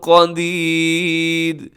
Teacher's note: وقف کریں گے تو را ساکن ہو جائے گی، لیکن را باریک رہے گی کیونکہ اس را سے پہلے یائے ساکنہ ہے